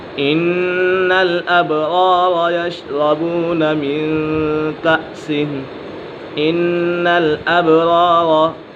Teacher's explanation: یہاں پر نون مشدد ہے، نون مشدد میں ہمیشہ غنہ ہوتا ہے اور باقی اوپر قلقلہ ہو رہا ہے۔